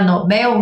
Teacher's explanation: Já a palavra Nobel não é uma palavra paroxítona é uma palavra oxítona tá a sílaba mais forte é a última